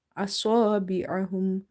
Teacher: Swad is heavy, and because of the swad, alif is heavy. Okay, it seems that this alif is not having any sign, but this fatha here is for this alif, and this fatha is for this swad.